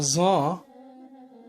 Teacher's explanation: A za makes a z sound. It's almost like adding a w sound in the middle and saying zwa, but without making your lips round for the w sound.